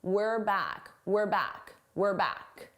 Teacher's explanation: notice how unstressed my pronunciation is. It sounds like were, not we're, were. This is how native speakers say it at a natural pace. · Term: contraction